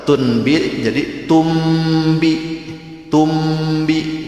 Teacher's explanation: Nah, itu bukan berarti nambahin huruf, tapi itu menandakan bahwa ketika membacanya nun mati ketemu ba itu harus ke mim. Itu yang disebut dengan iklab.